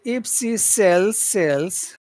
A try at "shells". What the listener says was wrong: If she sells shells. Shells. Shells. You've got to lift up your tongue more. Shell. If she sells shells.